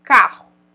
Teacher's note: a gente escuta um R só mais forte